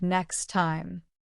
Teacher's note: In next time, the T in next often disappears. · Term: Elision